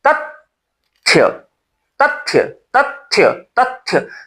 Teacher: महाप्राण व्यंजन से पहले अल्प प्राण व्यंजन उच्चरित हो ही जाता है।